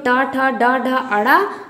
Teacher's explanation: तीसरा है मूर्धन्य। मूर्धन्य मतलब मूर्धा से, कठोर तालु के अगले भाग से, उससे क्या उच्चरित होता है, ट वर्ग।